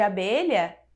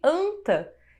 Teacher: é diferente o A de abelha do AN de anta, que é nasalizado